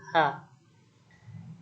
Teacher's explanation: yaitu bunyi yang dihasilkan oleh keterlibatan tenggorok tenggorokan atau laring caranya udara yang keluar dari paru-paru digesekkan ketenggorokan misalnya h kemudian yang kesemb bunyi atau yang terakhir yaitu bunyi